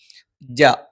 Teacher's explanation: ജ നാവിന്റെ മധ്യഭാഗം മേലെ അണ്ണാക്കിലാണ്.